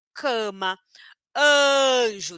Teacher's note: depois da letra A vier uma consoante nasal um m ou um n então cama Depois dessa primeira letra A Eu tenho um M então a letra A vai ficar com o som nazal